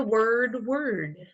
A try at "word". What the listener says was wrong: Open it up just a little more.